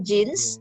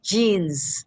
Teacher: we don't pronounce it with an s we pronounce it with a z